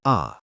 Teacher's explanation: विवृत मुख पूरा खुलता है।